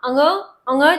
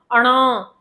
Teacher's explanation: आप अंग अ ङ् जब बोल रहे हैं तो एक जो गूंज की साउंड आ रही है वो साउंड कहां से आती है? नाक से आती है। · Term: अनुनासिक वर्ण